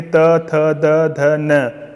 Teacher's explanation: ट वर्ग मूर्धा है, त वर्ग वो दंत है।